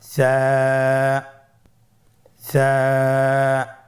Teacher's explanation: সা হরফটির মাখরাজ হলো উচ্চারণের স্থান জিহ্বার আগা সামনের উপরের 2 দাঁতের আগার সঙ্গে লাগিয়ে উচ্চারিত হয়